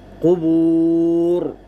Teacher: اب قبور میں اگر ہم وقف کریں گے یہاں پر تو اس صورت میں، وقف کی صورت میں را کو پر پڑھیں گے، قبور۔ اور اگر ملا کے پڑھیں گے اگلی آیت کے ساتھ تو پھر اس صورت میں را باریک پڑی جائے گی۔